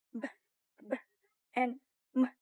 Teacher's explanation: These sounds are made when both lips come together.